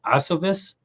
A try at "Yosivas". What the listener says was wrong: Oh, it's Yosivas. Yosivas. It's a Y. It's like Yoshi. Yosivas.